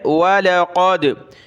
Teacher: क़ाफ़ को मोटा किया, दाल पर क़लक़ला है।